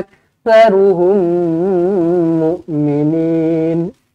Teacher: Mim kosong bertemu dengan mim sabdu idgham mitlain shaghir, dengungkan 2 harakat.